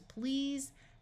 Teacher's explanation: EA will have its usual long e sound and the S will say Z